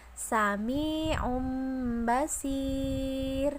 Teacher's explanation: Nah, nun sukun dan tanwin itu dibaca iqlab apabila bertemu dengan huruf ba. Kemudian huruf mim tersebut dibaca ikhfa atau samar-samar ke huruf ba, disertai gunah atau mendengung pada huruf mim tersebut